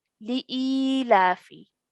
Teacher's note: the la stretched for 2 counts as well because of the vertical fatha